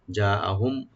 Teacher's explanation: ইযা জাআহুম যা এখানে মধ্যে মুত্তাসিল একালে টানবেন হামজাকে রাইট দিবেন মিম সাকিন এখানে জাহার করব আমরা জাআহুম গুন্না হবে না